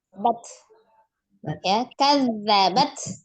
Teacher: Kadzabat. Nah, huruf ta juga siddah. Ya, tidak mengalir suaranya, hanya alhams mengalir nafas. Apa yang didahulukan antara siddah dengan alhamsnya, dahulukan siddahnya, sukunkan dulu bat, nah, kemudian baru alhamsnya.